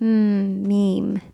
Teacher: basically it's going to have a small force, not like ba that has a strong force.